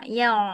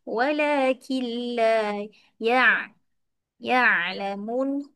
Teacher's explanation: Huruf ya dengan ain bagi dia nipis aje ya.